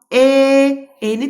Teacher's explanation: E-ni deyərkən artıq dilimiz öndədir. Deməli, e incə saitdir.